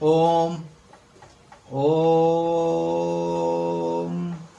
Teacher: ऐसे स्वर वर्ण जिनके उच्चारण में ह्रस्व स्वर से ज्यादा समय लगता है, 3 गुना समय लगता है, उसे हम क्या कहते हैं, प्लुस स्वर कहते हैं।